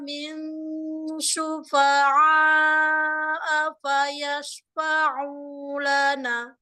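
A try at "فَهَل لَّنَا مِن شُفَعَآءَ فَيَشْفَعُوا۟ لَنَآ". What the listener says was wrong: Kok pendek banget ya nanya? Kayak enak gitu, kayak jatuh, kejeplak gitu ya. Sedikit lagi. sedikit lagi. Nah, dikit lagi. jadi kayak lagi jalan terus habis itu gejeplak gitu jatuh ke depan.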